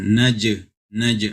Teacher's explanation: Jim adalah huruf Qalqalah maka harus dipantulkan